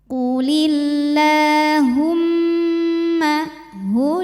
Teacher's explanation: harakat lamnya ini baris panjang ya maka panjangin dua harakat [Musik] hu dari tenggorokan bawah bawaannya berat ya